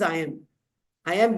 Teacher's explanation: I am I am is unstressed followed by stressed